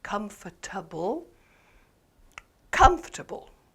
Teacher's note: in the word comfortable comfortable the first syllable is stressed